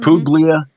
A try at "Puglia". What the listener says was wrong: Puglia? You don't pronounce the G in Italian. We don't even know why it's there. Puglia.